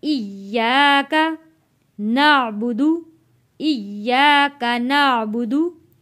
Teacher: या के ऊपर तशदीद है, इसलिए हम यहाँ या के ऊपर सख्ती से यहाँ इसको अदा करेंगे।